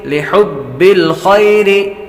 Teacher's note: یا حروف لین میں سے ہے، لمبا نہیں کریں گے